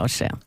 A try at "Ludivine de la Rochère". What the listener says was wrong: Rochère, Ludivine de la Rochère. Vous prononcez mal, c'est Ra. R-A. Rochère.